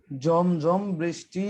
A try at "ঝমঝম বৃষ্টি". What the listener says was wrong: না, এটা জমজম হয়ে গেল, ঝমঝম। ঝমঝম বৃষ্টি,